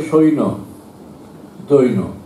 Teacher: এই জফলাটা ব্যঞ্জনটা ডবল হয়ে যায়